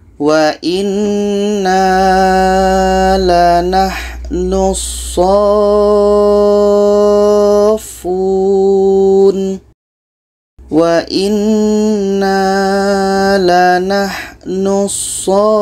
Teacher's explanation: kita panjangkan 6 harkat baru masuk ke huruf yang ada tasydid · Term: mat lazim kilmi mutsaqqal